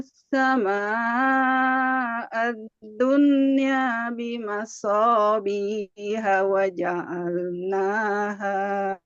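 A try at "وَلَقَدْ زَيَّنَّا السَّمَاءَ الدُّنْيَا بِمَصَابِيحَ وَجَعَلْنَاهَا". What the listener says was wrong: Ya, sip, barakallahu fiik.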